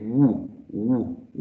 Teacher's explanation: Labiovelar, because when you say woo, as in whenever or what or which, you put your lips rounded, so you use your lips, so it's labio, and velar because the back of the tongue goes up towards the velum when you say woo, woo, woo